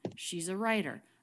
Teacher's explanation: peak on rye and the pitch falls down she's a writer really smooth no jumps or gaps in the pitch there she's a writer and notice the t here is a flap · jumps or gaps in the pitch there she's a writer and notice the t here is a flap t because it comes between two vowel sounds so it's not a true team okay